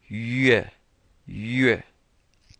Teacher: this U is like that French U, so your lips are pursed